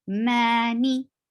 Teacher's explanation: Clearly make 2 haraka long letter different from the short vowel. So ma is 2 counts long, and ni just touch and go.